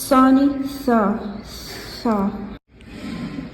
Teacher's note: सा जुबान के नोक को सनाया औलिया पर यानी ऊपर के दांतों पर लगाने से और थोड़ा सा जबान को चावल के दाने के जितना निकालने से इसका मखरज अदा होता है।